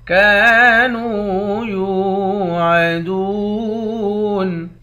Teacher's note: کاف کے بعد الف ہے، الف حروف مدہ ہے، ایک الف کے مقدار کھینچیں گے۔ نون کے بعد واو ہے، واو بھی حروف مدہ ہے، اس کو بھی ایک الف کے مقدار کھینچ کر پڑھیں گے۔